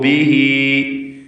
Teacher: ബിഹി എന്നതിലെ ദീർഘം മദ്ദുസ്സിലത്ത് സുഗ്റ എന്നതാണ്. രണ്ട് ഹറക്കത്തിൻ്റെ അളവിൽ മാത്രം അതിൻ്റെ യാഇന് ദീർഘം വരുന്നു. വഖഫ് ചെയ്യുമ്പോൾ ബി എന്ന് സുക്കൂൻ നൽകുകയും വേണം.